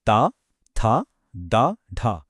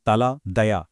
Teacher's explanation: ఇందులో నాలుక పళ్ళను టచ్ చేస్తుంది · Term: దంత్యాలు